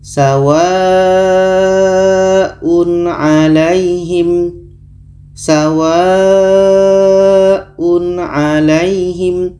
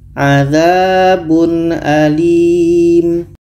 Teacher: Tanwin dibaca jelas, dibaca jelas dan tidak dengung. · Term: izhar halki